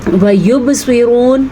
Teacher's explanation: پھر سے قلقلہ ہو رہا ہے اور سواد کو پر پڑھیں گے اور پھر سے را کو پر پڑھیں گے